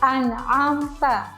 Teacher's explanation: Contoh lainnya ada nun sukun bertemu dengan ain, yang dibaca an'amta. Ya, jadi nun sukun dan ain dibaca dengan jelas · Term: izhar